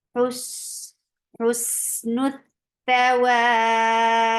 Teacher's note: ba will get qalqala because of the sukoon